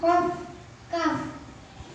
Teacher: Qaf, kaf, makhrajnya pangkal lidah.